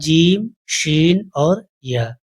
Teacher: बीच जुबान बीच तालू से टच होगी। जिससे यह तीनों हरूफ अदा हो जाएगा।